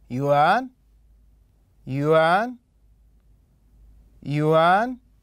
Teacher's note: نلاحظ أن مستوى الصوت كان صاعد إلى الأعلى فتكون النغمة الثانية